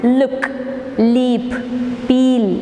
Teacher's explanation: air is blocked at the center and escapes through the sides by producing the sound l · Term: lateral sound